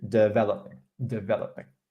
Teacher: word stress is on syllable number two